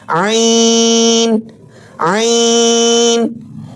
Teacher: حلق کے درمیانی حصے سے واضح ادا کریں